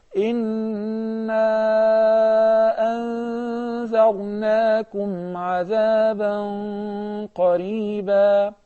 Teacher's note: in the case of the separate mad, permissible separate mad, we apply the mad 4 harakas.